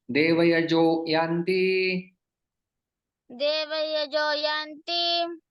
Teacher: यहाँ पर विसर्ग का ओ में परिवर्तन हो जाता है।